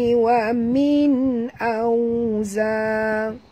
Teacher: nun mati bertemu hamzah tak boleh dengung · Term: huruf izhar